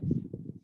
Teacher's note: মিম উচ্চারিত হচ্ছে, এই মিম উচ্চারণ করতে গেলে ঠোঁটের শুকনো অংশ দুটোকে একত্রে লাগাতে হচ্ছে আমাদের, যে অংশগুলো বাইরে থাকে, অর্থাৎ মিম।